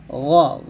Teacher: হরফ উচ্চারণ মোটা হবে জিহ্বার গোড়া ও আওয়াজের গতি উপরের দিকে হবে